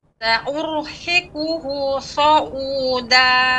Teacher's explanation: Sifatnya sofir, tajam, ya, namun tebal.